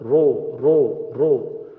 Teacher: So Ra Dhamma will be Ro, it's tafkhim, the full mouth.